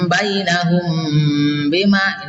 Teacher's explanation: mimnya ditahan karena bertemu ba